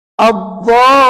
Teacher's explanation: Ad-dha tadi saya buat 6 harakat, tapi lin saya buat 4. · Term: mad arid li sukun